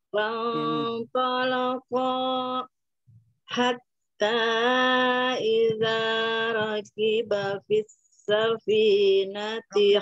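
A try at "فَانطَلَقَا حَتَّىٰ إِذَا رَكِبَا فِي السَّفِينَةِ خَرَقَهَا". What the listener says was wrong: Rakibanya panjang, sudah itu jangan diputus-putus, bacanya bersambung gitu ya. Fantalaqa hatta, jadi jangan fantalaqa, stop hatta, ya itu jangan begitu. Disambung.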